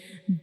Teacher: जैसे बा आ बा तो हम बा को पढ़ने के लिए क्या करते हैं कि हमारे दोनों लीप्स का अंदर वाली साइड पे जो गीला हिस्सा होता है उसको हम आपस में जोड़ते हैं।